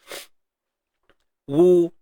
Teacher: ingat makhraj bagi huruf waw, 2 bibir dimuncungkan. Dan ada sedikit ruangan di tengah-tengah tu lah. Wu. Dia takkan tutup habis.